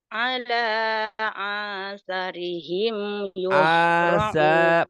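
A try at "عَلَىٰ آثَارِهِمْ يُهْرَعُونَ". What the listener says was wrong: panjang semua. Ala asarihim panjang. Ain ala asarihim yuhra'un.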